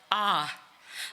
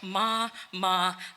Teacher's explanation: an open back vowel your lips do not curve round